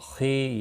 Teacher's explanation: یا مدہ ہے، 1 الف کے برابر کھینچ کر پڑھیں گے، ہی کو کھینچنا نہیں۔